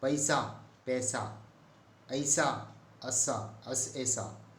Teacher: ऐ और औ जो दो संयुक्त स्वर हैं का उच्चारण ए और ओ होता है